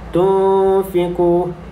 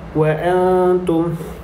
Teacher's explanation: terdapat huruf nun berjumpa dengan huruf-huruf ikhfa hakiki, yang mana huruf ikhfa hakiki perlu dibaca dengan dengung 2 harakat